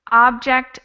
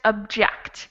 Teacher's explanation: the first one has the stress on the first syllable, and the second one on the second syllable.